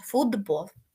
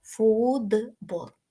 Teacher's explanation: дзвінкий б впливає на Т так що Т стає д тому ми з вами маємо фудбол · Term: асиміляції